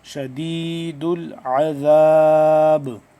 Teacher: یہاں پہ ہم با کو آخر میں قلقلہ کریں گے